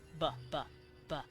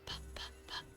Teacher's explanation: ba is pa but voiced